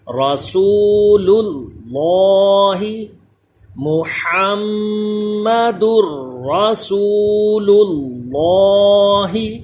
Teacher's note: یہ پہلا لام باریک پڑھیے، اللہ کا لام یہ پر پڑھیے